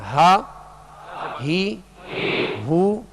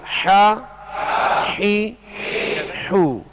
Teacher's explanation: ہا جو ہے وہ ابتدائی حلق سے اور حا جو ہے درمیان حلق سے ادا ہوتا ہے. اور ان میں فرق جو ہے یہی ہے جو آپ آواز کو محسوس کر رہے ہیں، ہا اور حا، ہا حا، یہ فرق ہے ان کے اندر، اور یہ فرق کرنا ضروری ہے، ورنہ ہا حا بن گیا، حا ہا بن گیا تو یہ درست طریقہ نہیں ہے.